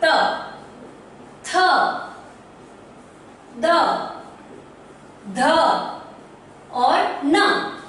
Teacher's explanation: जब मैंने त बोला तो मेरी जीवा जो है दांत के अग्रिम भाग को स्पर्श करके वापस आएगी।